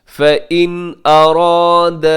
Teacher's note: فَإِن میں نون ساکن کے بعد حمزہ ہے تو یہاں پہ اظہار کریں گے